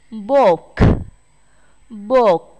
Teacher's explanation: Quyển sách có âm K đứng ở cuối câu, chúng ta sẽ chú ý bật hơi nhé